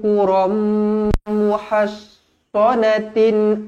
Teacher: tanwin tak selari bertemu dengan mim, idgham ma'al gunnah. Dengung 2 harokat.